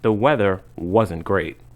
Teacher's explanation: Wasn't and weren't usually don't have a clear T sound at the end. The T sound is cut off or disappears.